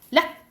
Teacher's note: 점의 개수와 상관없이 빨리 끝나는 소리예요. 그래서 락 이렇게 끝나는 거예요. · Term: 입성